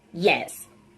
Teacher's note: this is a voiced sound it's a palatal sound and it's a glide sound does not have air constriction